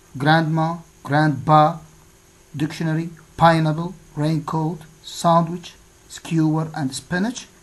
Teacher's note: all these words have a stress on the first syllable